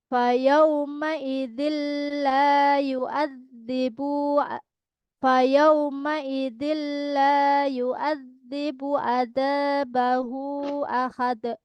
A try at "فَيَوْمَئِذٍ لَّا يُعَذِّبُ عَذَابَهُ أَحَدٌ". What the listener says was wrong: Panjangin hu-nya.